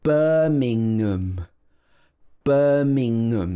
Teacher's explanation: So the ng in the middle joins together with the schwa at the end.